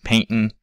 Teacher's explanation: there's a little bit of a hitch to the voice called glottalization that represents the T sound in that case.